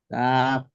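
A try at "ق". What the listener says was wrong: কাফ শেষে বাতাস কি বের হচ্ছে আমি শুনতে পারতেছি না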